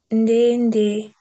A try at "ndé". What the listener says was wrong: Ndé, ndé, ndé. Voilà le moyen moyen. Ndé, ndé. Alors que le ton haut, c'est ndé. Ah ah, ah ah. Le ton haut, c'est peu.